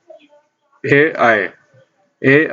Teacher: और अगला है सूत्र एदैतो कंठ तालु, एदैतो कंठ तालु। कंठ तालु यानी कि इन दो अवयवों से एक साथ उच्चरित होता है, कंठ और तालु दोनों से मिलकर दोनों को स्पर्श करता है। कोई वर्ण है जो दोनों को स्पर्श करता है एक साथ, कंठ को भी स्पर्श करेगा और तालु को स्पर्श करेगा, इसलिए इनको उच्चारण स्थान इन दोनों साथ में होता है, कंठ तालु।